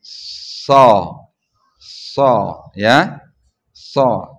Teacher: Hanya bibir bawahnya yang naik dikit dengan ujung lidahnya ada di belakang pangkal gigi.